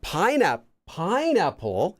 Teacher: it goes up and then back down and then back up to the Baseline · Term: intonation